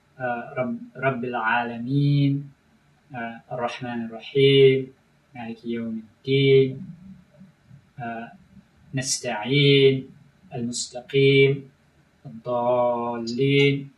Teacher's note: a very common near rhyme in the Quran is what's called nasal rhymes, eem and een, which you see very clearly in Surah Al-Fatiha, Rabbil Alameen, Ar-Rahman Ar-Rahim, Maliki Yawm Al-Din, Nasta'een, Al-Mustaqim, Al-Dallin.